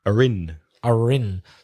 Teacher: But let's go with standard British English. The R is normally with a silent R. But if you combine it with a word beginning with a vowel, then it's are in.